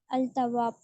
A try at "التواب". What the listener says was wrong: अल नहीं पढ़ना है, التواب. ता